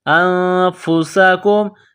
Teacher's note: تقتلون انفسکم، نون ساکن کے بعد فا ہے تو یہاں پر غنہ کریں گے، آواز ناک میں چھپائیں گے۔ انفسکم، سین میں سیٹی کی آواز پیدا کریں گے، سین کو باریک کریں گے۔